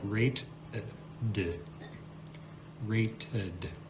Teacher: In rate, the last sound that we hear is a T sound. But in rated, in the past tense, that E takes on a schwa sound and we get rated.